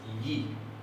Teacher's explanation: es una vocal bien cerrada si uno la cierra más se puede convertir casi en una consonante y eso es una semiconsolada verdad es la y la yodo